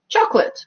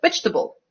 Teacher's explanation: when it's not stressed it's not even schwa we just lose that syllable completely